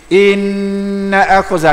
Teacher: Jangan inna akhaza nak sikit lagi. Inna akhaza tahan sikit, 2 harakat wajibal ghunnah. Inna akhaza, kalau inna akhaza tak cukup 2 harakat ghunnah tu.